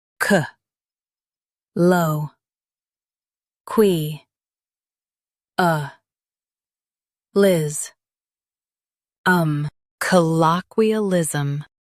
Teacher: stress low and keep ism light